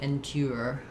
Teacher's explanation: in British English, they might do endure, more of a gliding y sound there